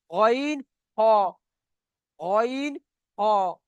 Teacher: দেখেন গইন, গইন করলে একটা গড়গড়ার মতন আওয়াজ আসছে না, ভিতর থেকে বার হচ্ছে। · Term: গইন খ